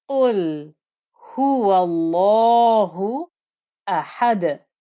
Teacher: we have the ha with the damma, then we have the sharp noise of the hamza, the breathy noise of the ha